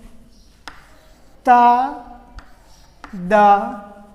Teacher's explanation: Ta, da. These 2 are dental sounds.